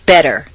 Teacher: the Double T in better is pronounced d better any other pronunciation will sound foreign strange wrong or different